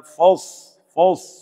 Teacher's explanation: صاد کا خیال رکھنا ہے، صاد کو موٹا پڑھنا ہے